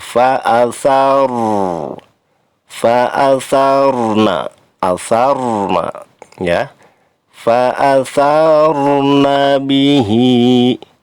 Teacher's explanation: Fa'athar, ro, di situ ada huruf ro ya, ro sukun. Ini dibaca tafkhim, artinya tebal